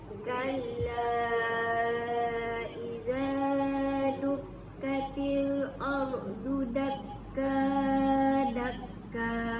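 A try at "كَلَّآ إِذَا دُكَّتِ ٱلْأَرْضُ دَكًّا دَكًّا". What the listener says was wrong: Eh dengung macam mana tu? Dengung tu tak sempurna dengung tu.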